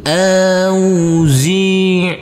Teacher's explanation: huruf Ain yang bersukun ini harus kita alirkan harus ada aliran